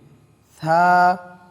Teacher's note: থা জিহ্বার আগা উপরের দাঁতের আগার সাথে গিয়ে লাগবে এবং হালকা বাতাস বের হবে।